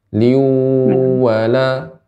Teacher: Nah, maka ketika idgham biguna artinya dimasukkan ke huruf waw, tanwin dimasukkan ke huruf waw disertai dengan gunnah dan gunnahnya ini dipanjangkan. La dhaliliu dengan dimonjongkan bibirnya.